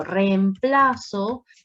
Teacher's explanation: en reemplazo hay un hiato son dos vocales fuertes iguales